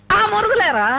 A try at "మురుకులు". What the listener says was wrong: మురుగులు కాదమ్మా, మురుకులు.